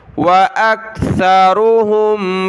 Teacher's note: रा कलरफुल मोटा पढ़ेंगे, सा पर ज़बान निकालें